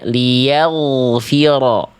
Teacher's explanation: Liyaghfira, harusnya liyaghfira. Angkat pangkal lidah ghainnya biar tebal. Dia termasuk ke dalam huruf yang tebal, bukan huruf yang tipis. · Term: huruf ghain